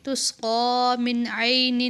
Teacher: عین پر ہم حروف حلقی ہونے کی وجہ سے نون پر غنہ نہیں کریں گے